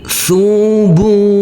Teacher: huruf ba yang berdhamah u bertemu dengan huruf wawu sukun, maka kita baca panjang dengan panjang 2 harokat